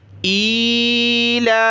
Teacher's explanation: لام کو اوپر کھینچا ایک الف کی مقدار، کھڑا زبر ہے